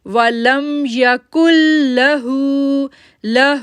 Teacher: ہو کو 2 سیکنڈ کے لیے کھینچیں گے کیونکہ اس کے اوپر جو ہے وہ سٹینڈنگ دمہ ہے، یعنی الٹی پیش ہے.